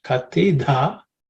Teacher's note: Again, the fourth letter in the third varga, so it has to be aspirated.